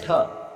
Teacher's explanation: ठ जो है वो मूर्धन्य महाप्राण और अघोष व्यंजन वर्ण के अंतर्गत आता है